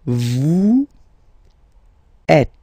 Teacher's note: Notice that final S is not pronounced.